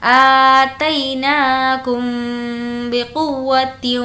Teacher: میم ساکن کے بعد با ہے تو یہاں پر اخفاء شفوی ہوگا، یعنی کچھ دیر ناک میں آواز کو روکیں گے